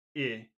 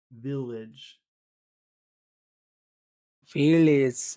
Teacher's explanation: It's more in the back of your throat. You've got to push that E a little bit back.